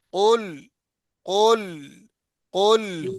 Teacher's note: قل میں قاف کو موٹا پڑھے نا، لام کو باریک پڑھے